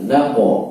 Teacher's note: setiap kali qaf mantul itu qafnya adalah isti'la tebal, maka ketika mantul pun dia ikut tebal ya, ketika sukun ikut tebal. Naqo bukan naqe gitu ya.